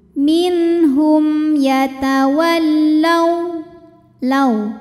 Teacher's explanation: dibaca dengan jelas minhum kemudian ada hukum izhar syafawi karena ada mim sukun menghadapi huruf ya Selain mim dan ba maka mim dibaca dengan jelas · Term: idhar syafawi